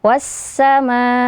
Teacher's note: Jadi panjangnya setidaknya empat harakat. Jumlahnya tidak boleh kurang dari empat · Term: mad wajib muttasil